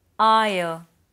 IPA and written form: ˈʌɪə (ire)